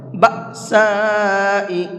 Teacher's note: یہاں یہ حمزہ ساکن ہے اور حمزہ ساکن کو جھٹکے کے ساتھ میں پڑھا جاتا ہے، اس لیے میں نے اس کو جھٹکے کے ساتھ پڑھا ہے، بأساء، اس طرح سے۔